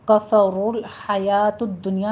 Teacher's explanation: کفر الحیات الدنیا میں رو مفخم پڑھی جائے گی، ضمہ والی ہے۔